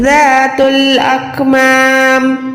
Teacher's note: ذال پر ذا کو لمبا کریں، ذال کو سافٹ رکھیں، نرم حروف ہے